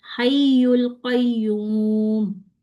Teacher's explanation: हय्युल पे मैंने आवाज को उठाया, ठीक है, आवाज को ऊपर उठाया, मैंने जबान को नहीं उठाया